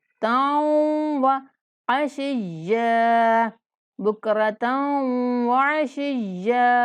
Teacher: تا کو واو کے ساتھ غنہ سے ملائیں گے